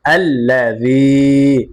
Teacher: ইয়া সাকিন মাদে হরফ এক আলিফ টান হবে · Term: মাদে তবাই